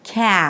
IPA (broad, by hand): 'kæ-'